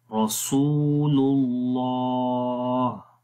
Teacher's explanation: آخر میں ہا کی آواز کو، ہا کی جو صفت ہے ہمس والی وہ آ جائے گی